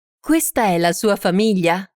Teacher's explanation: Note the rising intonation of the sentence to indicate that it's a question.